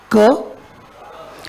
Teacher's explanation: क्या हुआ आपके टंग को? आपकी टंग पीछे का जो पार्ट था, back part of the tongue, वो रेज हुआ और it has block the, it has gone and touch टू soft palate.